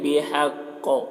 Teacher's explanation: قوف کو پر پڑھیں گے، اور یہاں پر وقف کریں گے تو قوف میں قلقلہ بھی ہوگا